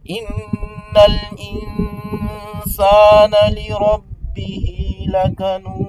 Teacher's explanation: il y a la ghunna à faire à cause du shadda sur le nun